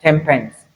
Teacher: Because for you to move your lips from the alveolar ridge where you have the sound to have the formation that will give you the p sound, it will be difficult. So the nasal sound changes to the bilabial nasal